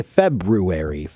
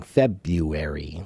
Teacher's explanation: So they have removed the first R in the word February when they pronounce it.